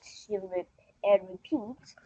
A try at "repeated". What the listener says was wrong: You need to pronounce the end of that word. Repeated.